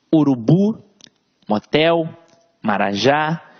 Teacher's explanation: veja que a sílaba tônica está sempre na última sílaba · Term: oxítonas